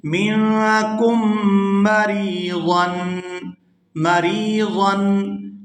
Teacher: یہاں را کو یا ساکن کے ساتھ ملائیں گے تو کھینچ کر ادا کریں گے کیونکہ یہ یائے مدہ ہے۔ یا ساکن ہو اور اس سے پہلے حرف کے نیچے زیر ہو تو وہ یائے مدہ ہوتی ہے اور اس کے ساتھ جو بھی حرف ملے اسے کھینچ کر ادا کیا جاتا ہے۔